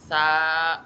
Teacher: लॉ में जो है आप क्या करेंगे, होंठों को पूरा तरीके से गोल कर देंगे क्योंकि ये है मोटा हर्फ, लॉ। फिर आपका आ जाएगा सा, इसमें आपके होंठ स्ट्रेच हो जाएंगे